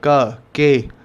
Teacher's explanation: उसमें आपकी जीभ का पिछला हिस्सा और आपके थ्रोट का पिछला हिस्सा आपस में कांटेक्ट में आते हैं और तब आप ये अक्षर या जो मतलब इसे के से स्टार्ट होने वाला जो वर्ड है वो आप बोलते हैं।